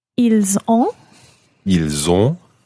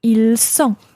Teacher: So it's the difference between a z, a voiced z sound, and an unvoiced s sound.